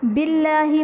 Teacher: اسم جلالت اللہ عز و جل کے لام سے پہلے زیر ہے تو یہاں پر اسم جلالت اللہ عز و جل کے لام کو باریک پڑھیں گے